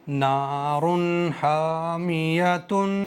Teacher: रा पर हमें गुन्ना नहीं करना है, बगैर गुन्ने के पढ़ेंगे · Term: इजहार